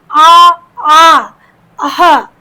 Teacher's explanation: अ आ और विसर्ग अः कंठ से है · विसर्ग का उच्चारण कहाँ से होता है, कंठ से होता है।